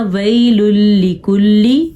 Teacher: جیسا کہ آج کے سبق میں ہم نے پڑھا نون تنوین کے بعد ہم نے پڑھا ویل لکل، ہم نے یہاں پہ نون تنوین کے بعد لام پڑھا تو یہاں پہ ملا دیں گے واپس میں، یعنی کہ شد بن جائے گی، لیکن کسی قسم کا غنہ نہیں کرنا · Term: ادغام بلا غنہ